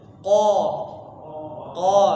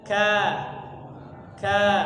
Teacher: jadi tebal lidahnya naik ke Pangkal pangkal lidahnya naik ke langit-langitnya qo qo qo seperti beda dengan ka ka seperti itu jadi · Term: huruf qf